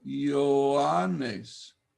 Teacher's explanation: Ioannes, not eo, but in English, we move from e to yo. Ioannes. This is only with iota that this happens.